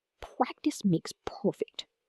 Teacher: Feel the sharp crispness of the P sounds blowing air past your lips.